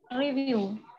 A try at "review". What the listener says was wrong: Yeah, perfect. You can speak better and you have very good accent.